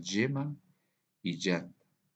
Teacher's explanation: el yeísmo es que vamos a pronunciar de la misma forma la letra Y y la doble L.